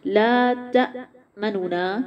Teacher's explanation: لا الف باریک ہوگا، تا آواز بند ہوگی، منونا، منونا، جو دو نون اس میں سے پہلے نون کو پیش کے ساتھ پڑھیں گے لیکن اس حرکت کو ہم 1/3، اس پیش کو پورا نہیں پڑھیں گے، 1/3 پڑھیں گے، اس طریقے کو اظہار محروم کہا جائے گا۔